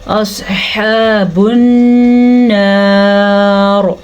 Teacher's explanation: کو پر پڑھنا ہے، سواد ہمیشہ ہی پر پڑھا جاتا ہے، منہ کو جب گول کریں تو سواد آپ سے پر نکلے گا